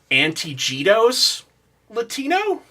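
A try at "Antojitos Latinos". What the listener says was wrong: Yeah, they definitely pronounce the J's like that.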